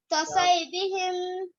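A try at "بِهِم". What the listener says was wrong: बिहिम नहीं है, बिम है बिम। तवज्जो करो ना, उंगली रखो से कुरान पे उंगली रख के सामने कैमरा रखो, उसमें शाबाश पता लगे वजह है कि नहीं। कसवई बिम, क्या मुश्किल है होता है,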